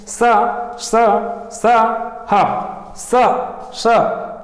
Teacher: प्राणवायु के घर्षण होने के कारण हम लोग स ह को संघर्षी व्यंजन बोलते हैं।